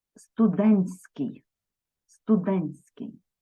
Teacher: Але у вимові будуть зміни буде відбуватися спрощення оцей Т що посередині буде випадати